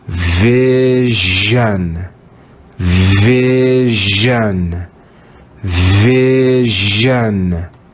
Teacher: The fourth sound made by the English letter S is the aspirated and voiced S. Zh, zh. Let's read this word with the aspirated and voiced zh.